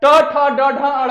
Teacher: है ऊपर टच कर रहा है ट ठ ड ढ अड़ ट ठ ड ढ अड़ में जो हम लोग का जीभ है ऊपर और नीचे दोनों में टच कर रहा है